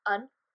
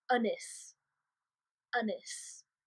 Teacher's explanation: It's kind of the schwa, so the lazy sort of sound you have at the beginning of alive or about